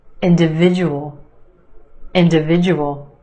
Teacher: five syllables in this word emphasis on the third syllable